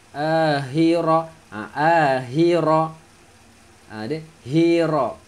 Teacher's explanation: Tak sampai pada makhraj yang sepatutnya keluar untuk huruf kha.